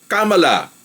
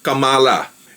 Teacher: ang tamang way ng pag bigkas ng kanyang pangalan is yung accent nandoon sa third syllable kamala parang Hillary hindi yung cala eventually malalaman na rin natin